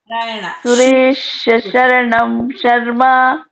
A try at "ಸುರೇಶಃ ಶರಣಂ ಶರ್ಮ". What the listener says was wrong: ಸುರೇಶ ಅಂತ ಕಂಪ್ಲೀಟ್ ಮಾಡಿ ಆಮೇಲೆ ಶ್ರೀ ತಗೋಬೇಕು. ಸುರೇಶ್ ಅಂತ ಅಲ್ಲಿಗೆ ನಿಲ್ಸ್ಬಿಟ್ರಲ್ಲ. ಸುರೇಶ ಶರಣಂ ಶರ್ಮ.